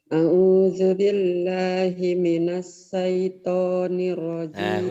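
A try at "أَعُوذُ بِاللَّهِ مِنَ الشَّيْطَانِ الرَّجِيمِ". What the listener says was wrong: Minash. A'udzubillahi minash. Shin. Kurang tasdidnya, kurang keluar.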